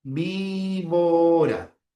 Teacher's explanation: tienes el fonema oclusivo, bilabial sonoro. Tienes a la B.